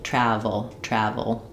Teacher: the V sound, my upper teeth and lower lip are connecting to make a restricted air.